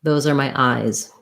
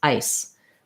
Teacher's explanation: I want to hold the vowel longer in eyes, and in ice, the vowel is going to be shorter and I'll have a strong S, ice. Eyes, I have a weak S or a Z and a long vowel.